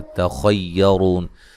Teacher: تا کو باریک، خا کو موٹا اور را کو موٹا ادا کریں گے